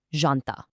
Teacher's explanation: It is definitely not a hard jumping J like you'd hear in the English word jump. It's incredibly soft. Actually, think of it much more like the S sound right in the middle of the English word measure, Jean.